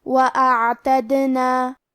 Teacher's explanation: کیونکہ دال پہ جزم ہے تو یہاں دال کا حکم ہے قلقلہ. ہمیں حرف الدال کو ہلاتے ہوئے یہ کلمہ کو پڑھنا ہے